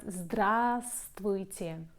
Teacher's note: In fact, that we don't pronounce the first v.